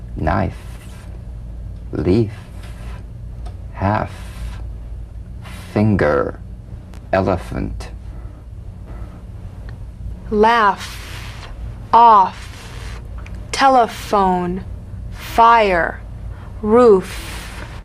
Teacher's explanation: the unvoiced fricative labio dental upper teeth to lower lip just like the V